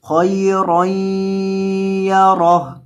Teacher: وقف کی حالت میں ہا کو ساکن کر دیں گے وقفاً، خیرًا یرہ.